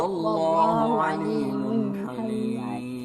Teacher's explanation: Tanwin bertemu ha jangan dengung.